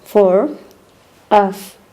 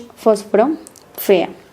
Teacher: The labiodental fricative sounds. This sound is the same in both languages. This is a voiceless sound.